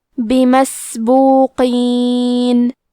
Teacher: حرف القاف کو موٹی آواز میں پڑھیں گے